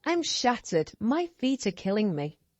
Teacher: Can you hear how the important words shattered, killing and feet are being pronounced really clearly? This makes them feel stronger and brings life to the sentence.